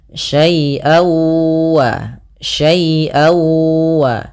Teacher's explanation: yaitu suara tanwinnya masuk kepada huruf wau jadi awalnya syaian ketemu wau dibaca syaiwa syaiwa maka kemudian langkah · Kemudian pada lafal an ketemu wa, nah ini sama sebagaimana hukum daripada nun mati ketemu dengan nun, yaitu suara tanwinnya masuk kepada huruf waw. Jadi awalnya syai'an ketemu waw, dibaca syai'awa, syai'awa.